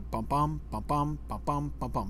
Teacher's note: 4 beats per line in an iambic pattern. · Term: iambic tetrameter